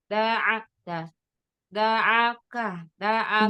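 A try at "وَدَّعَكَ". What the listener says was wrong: Da'a, ain tipis. da'a, da'a, bukan da'a. Masih a. Masih tebal, Mi. pangkal lidahnya masih naik.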